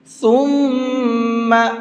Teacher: اس میم کے اندر غنہ کریں گے، یعنی آواز کو ناک میں روک کر کے پڑھیں گے، اور زیادہ نہیں روکنا ہے، صرف ایک الف کے برابر کرنا ہے۔